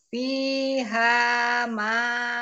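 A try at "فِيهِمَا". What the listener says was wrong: Fihi, afwan, fihi bukan ha. hi-nya tapi jangan panjang. Fihi ma.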